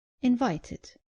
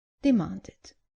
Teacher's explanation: not pronouncing the id clearly at the end of verbs ending in t or d. Just make sure you pronounce the e clearly.